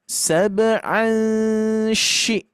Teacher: Jadi ketika mendengungkan, mengikhfakan, nah kita lidah kita ataupun makhraj kita sudah siap-siap mengucapkan shin. Maka nanti bunyi dengungannya atau bunyi ikhfanya itu akan dekat dengan shin ya.